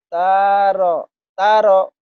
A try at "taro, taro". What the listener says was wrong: nggak boleh ada yang panjang. Ini pendek.